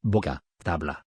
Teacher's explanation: B. Se emplea para representar el sonido oclusivo bilabial.